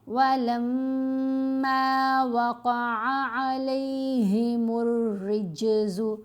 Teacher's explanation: میم پر غنہ بھی کرنا ہے, میم کو لمبا بھی کرنا ہے